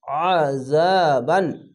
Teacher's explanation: আইনটিকে মোটা করে গলা চিপে পড়বেন। আইন যাবার আ, জাল আলিফ যা, আযা, বা আলিফ দু যাওয়ার বান, আযাবান।